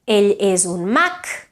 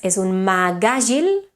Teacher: If you say ell és un mag, it finishes with a k, whereas és un mag àgil, then it becomes a g, voiced.